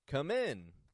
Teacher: the N is very short but the I is Raising in the tone the vowel sound is Raising in the tone getting stronger come